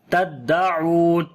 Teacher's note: Here is waw madda we long, and when we stop, so it will be madda aris, so we long almost 2 alif